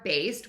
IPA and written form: beɪst (Baste)